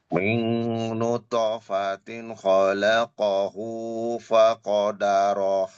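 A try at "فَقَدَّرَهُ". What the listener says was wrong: Faqaddarah. Tasydid di atas dal.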